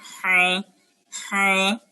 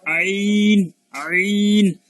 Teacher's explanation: আমাদের কন্ট্রোনালের যে 6টা হরফ তার মধ্যে একটা হচ্ছে আইন। তাহলে গলার মধ্যভাগে, গলার মাঝামাঝি আমরা এই হা উচ্চারণ করছিলাম, হা হা। এখন আইনটাও এরকম হবে, আইন আইন।